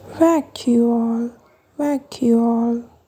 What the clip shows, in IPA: ˈvæk.juː.oʊl